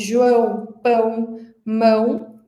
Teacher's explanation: E os sons nasais sai um pouco pela boca e um pouco pelo nariz · São sons que a gente produz com uma parte do ar saindo pelo nariz. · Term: som nasal